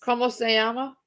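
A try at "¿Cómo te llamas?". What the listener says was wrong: It's not llama. 2 L's sounds like a J. 2 L's sounds like a J in Spanish. And it's te.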